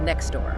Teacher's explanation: Said quickly, that T in next often vanishes. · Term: elision